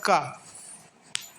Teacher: अब जो हमने का बोला तो ध्यान से इसको सुनेंगे तो इसमें आ छुपा हुआ है। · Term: व्यंजन